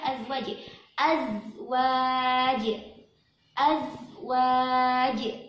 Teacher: hati-hati di az, ada bunyi lebahnya z ya, azwaj. Terus hati-hati di jim sukun.